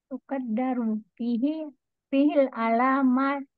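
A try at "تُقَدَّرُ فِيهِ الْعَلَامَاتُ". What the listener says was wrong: jangan dibaca ti. Kenapa di kasrah? Ti. Tuqaddaru kan fi'il. Berarti setelahnya marfu. Marfu. Nggak ikut fihi. Nggak ikut dimajrur dengan fihi. Fihi hanya memajrurkan domirnya saja tuh.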